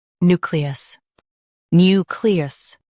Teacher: Stress new and keep cle smooth.